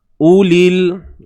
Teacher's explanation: Hamzah berbaris hadapan u. Satu harakat sahaja. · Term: waw ziyadah